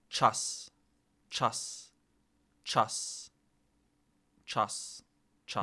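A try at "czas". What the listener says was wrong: Your vowel is too closed. You're too far back in the mouth. Like you need to yawn less is how I would explain it.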